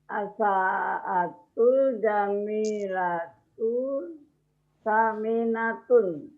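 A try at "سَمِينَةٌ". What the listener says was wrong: Tapi ini perlu dilatih bahwa sa-nya enggak panjang. Saminatun, bukan saminatun. Saminatun.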